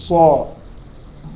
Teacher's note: صاد تفخيم من خصة أي خصة فخمة، وأعلى درجات التفخيم لأن بعدها ألف